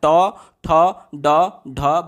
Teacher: ट, ठ, ड, ढ बोल करके देखिए, मूर्धा को आपकी जिह्वा पलट करके टच करते हुए महसूस होगी